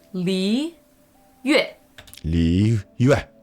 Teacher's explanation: Slowing that down a little, that is second tone and then fourth tone.